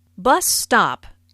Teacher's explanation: Bus stop is a compound noun with the main stress on the first word.